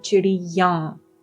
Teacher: The ya sound then becomes nasal for plural. So chidiya is singular, and chidiyan, if you have an N sound at the end, then that becomes plural.